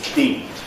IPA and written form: biːd (bead)